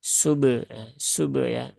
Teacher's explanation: huruf ba ini ada qalqalahnya. Maka ya sudah tinggal tunaikan saja qalqalahnya kemudian disambung ke huruf ha kan.